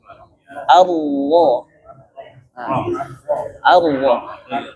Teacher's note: Jangan lupa tebalkan ro. Pangkal lidahnya naikkan ro. Jadi jangan bibir ro.